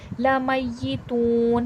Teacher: ज़ालिका, ज़ाल अभी मैंने बताया नरमी वाला हर्फ है, नरमी से पढ़ा जाएगा और खड़े ज़बर है, थोड़ा खींच के पढ़ा जाएगा। लमय्यितून, तू में वाव मद्दा हो रहा है, वाव साकिन से पहले पेश है, थोड़ा खींच के पढ़ा जाएगा